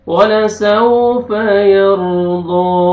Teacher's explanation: ولسوف را کو پر کریں گے، را ساکن سے پہلے فتحہ. ضاد کو موٹا کر کے پڑھنا ہے اور کھینچنا ہے ایک الف کے برابر